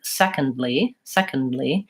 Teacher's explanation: the D is not actually silent in that word but I don't make a clear aspirated D I don't say second ly if there's no break between the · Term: stopped D